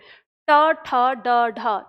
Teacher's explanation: मूर्धा वो स्थान है जहाँ पे आप ट का उच्चारण करते हैं